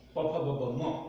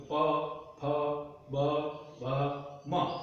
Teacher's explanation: ઓષ્ઠ્ય વર્ણ વ્યંજનો પ ફ બ ભ મ, આને બંને હોઠ ભેગા રાખી અને છૂટા કરીએ ત્યારે બોલી શકાય